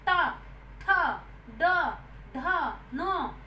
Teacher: तालु मतलब जो हमारा ऊपर वाले दांत के बीच का स्थान होता है उसे हम तालु कहते हैं। मूर्धन्य के अंतर्गत इन व्यंजनों के उच्चारण में जीभ कठोरता से तालु को छूती है। यानी कि एकदम से हमारी जीभ जो है हमारे तालु पर टक करके लगती है। · मूर्धन्य के अंतर्गत जब हम इन वर्णों का उच्चारण करते हैं तो हमारे जीभ जो है वो टक करके हमारे मूर्धन्य स्थान पर लगती है